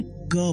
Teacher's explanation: टंग soft पैेट को touch करती है जिसे व्हीलर साउंड बोला जाता है।